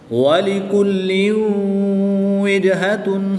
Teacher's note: تنوین کے بعد واو حروف معلوم میں سے ہے تو یہاں پر ادغام مع الغنہ ہوگا۔